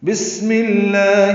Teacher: یہ سین ساکن پہ ہمس ہے، میم کی زیر کی وجہ سے لام اسم جلالہ باریک پڑھا جائے گا اور یہ ادغام شمسی ہے۔